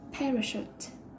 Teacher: Động từ, chúng ta trọng âm rơi vào âm đầu tiên